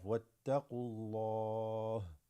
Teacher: You have the waw, alif here, that drops, goes straight to the ta, and then qaf.